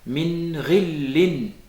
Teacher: ne pas faire intervenir explicitement ce qu'on appelle al-ghunna tout de suite après le nun sakina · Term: al-idhar